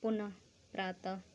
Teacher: जो भी हम बोलते हैं उसमें ह का साउंड आता है, ह की आवाज़ आती है